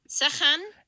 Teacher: that's the voiceless uvular fricative in the middle.